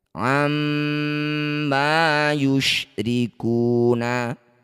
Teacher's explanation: Setiap ada mim atau nun yang bertanda tasdid disebut bacaan ghunah musyaddadah. Cara bacanya bunyi mim kita dengungkan dua harakat atau dua ketukan. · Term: gunnah musyaddadah